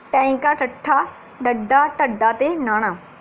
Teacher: ਉਲਟ ਜੀਭੀ ਜਿਹਦੇ ਵਿੱਚ ਆਪਣੀ ਜੀਭ ਬੋਲਣ ਸਮੇਂ ਉਲਟ ਜਾਂਦੀ ਹੈ, ਠੀਕ ਹੈ। ਇਹਦੇ ਵਿੱਚ ਜਿਹੜੀ ਆਪਣੀ ਜੀਭ ਹੈ ਉਹ ਉਲਟ ਜਾਂਦੀ ਹੈ ਤੇ ਉਲਟ ਕੇ ਕਿਹਨੂੰ ਛੂੰਹਦੀ, ਆਪਣੇ ਤਾਲੂਏ ਨੂੰ ਛੂੰਹਦੀ ਹੈ ਤੇ ਫੇਫੜਿਆਂ ਦੀ ਜਿਹੜੀ ਹਵਾ ਹੈ ਨਿਕਲਦੀ ਹਵਾ ਨੂੰ ਰੋਕਦੀ ਹੈ।